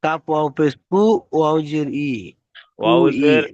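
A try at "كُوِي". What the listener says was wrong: ওয়াউজের ই উচ্চারণ হয় না, কি বলেছিলাম? ওয়াউজের ভি, ওয়াউজের ভি উচ্চারণ হয়, ভি।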